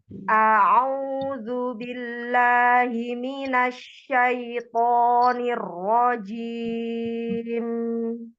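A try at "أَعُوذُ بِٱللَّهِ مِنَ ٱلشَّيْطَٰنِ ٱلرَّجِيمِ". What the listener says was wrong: Ro, jangan diangkat, jangan berrojim. Datar niro. Lidahnya jangan turun dulu, alirkan. Sebenarnya nirrojim dan nirrojim berarti naba, tapi mengalami sebagian tidak naba. Alis seperti seperti air saja. Nirro. Tahan dulu. Nirro. Ya, tahan dulu kan, itu kan ujung lidah, sedikit punggung lidah bertemu dengan gusi atas. Jangan turun dulu, alirkan dulu. Nirrojim. Jangan turun dulu lidahnya, ujung lidahnya.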